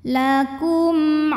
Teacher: Maka mim sukun ini kita bunyikan dengan jelas, jadi masih bunyi M dan tidak perlu ditahan. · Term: izhar syafawi